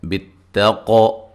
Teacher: قاف کو موٹا ادا کریں گے اور ساتھ قلقلہ کریں گے